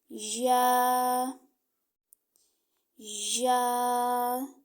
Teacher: जुबान के दरमियान और तालू के दरमियान से या को अदा करता है यानी आपका तालू का दरमियान और जुबान का दरमियान आपस में